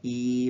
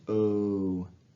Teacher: E is very unrounded. O is very rounded.